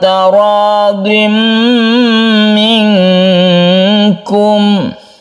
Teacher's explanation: Idgham artinya masuk ke mim. Suara tanwin itu masuk ke mim sehingga terbentuklah tasydid mim di sini. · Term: idgham bi gunna